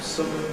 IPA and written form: səm (some)